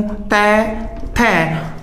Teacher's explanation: तै और थै का उच्चारण करते समय जो हमारी जिह्वा है वो दांतों को स्पर्श कर रही है। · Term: स्पर्श वर्ण